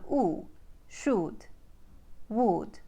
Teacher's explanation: short uh vow sound found in words like should and would becomes a tight ooh vow sound in the Ukraine accent